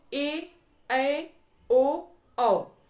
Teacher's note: जब हम यह बोल रहे हैं तो हमारा मुख क्या है आधा बंद है आधा खुला है